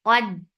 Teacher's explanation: There is no qalqala because this dal is with tashdid. · Keep qaf heavy but not dal. Dal is light.